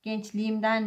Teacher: Gençliğimden kelimesinde gençlik imden. Burada da kelime sonundaki sert, sessiz, ünlüyle başlayan bir ek geldiğinde yumuşamış. Gençliğimden şeklinde olmuş. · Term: ünsüz yumuşaması